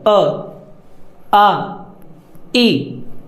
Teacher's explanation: इन 3 स्वरों के उच्चारण में जो हवा है वो मुंह से निकलती है। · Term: मौखिक स्वर